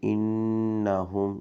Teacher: انہم نون پر غنہ کریں گے۔ ہا کو سینے سے نکالیں گے